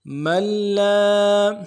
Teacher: اس کو نون کو نہیں پڑھیں گے بلکہ آگے لام کے ساتھ میم کو ملائیں گے کیونکہ لام کے اوپر تشدید ہے